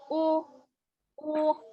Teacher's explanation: Bunyinya U, monyongkan ke depan kedua bibirnya. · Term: harokat dhammah